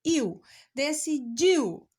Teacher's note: Iu, decidiu. O U já sai um pouco mais fraco, então eu tenho um ditongo. As duas não se separam.